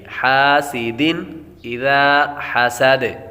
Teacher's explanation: دن دال پر تنوین ہے، تنوین کے بعد حمزہ حروف حلقی میں سے آ رہا ہے تو غنہ نہیں کریں گے